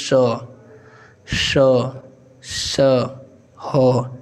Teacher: हमारे मुख से गर्म हवा आ रही है, यानी कि रगड़ाहट जैसा इसमें महसूस हो रहा है। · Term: उष्म संघर्षी